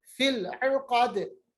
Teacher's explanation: आइन का मखरज याद रखिएगा वस्त हलक, क़ाफ को मोटा पढ़ेंगे और दाल पे जज़म लाएंगे, सुकून लाएंगे तो दाल पे कलकला होगा।